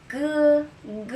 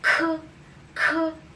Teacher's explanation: So letter G is G, G. While the letter K, there should be air.